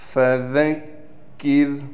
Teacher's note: کاف کو بالکل باریک کرنا ہے، اس کے بعد را ہے، را کو بھی ہم بالکل باریک کر کے پڑھیں گے